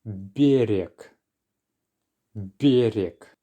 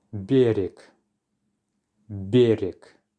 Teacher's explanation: we're softening the b at the beginning, followed by the rolling r, ra, and then the next letter y will be a little reduced. Берег, берег.